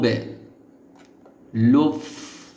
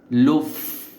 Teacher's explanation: সামনের উপরের দাঁত ঠোটের উপরে নিয়ে আসতে হবে